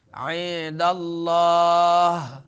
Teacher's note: عند اللہ نون ساکن اس سے بعد دال آ رہا ہے تو نون ساکن اخفا ہوگا